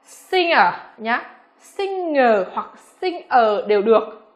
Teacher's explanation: Tuy nhiên thì khi phiên âm ra, trong này của chúng ta sẽ không có sự xuất hiện của âm G, mà thay vào đó là âm ng các em ạ